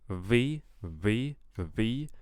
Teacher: I'm hearing too much uh that frication there um instead of a w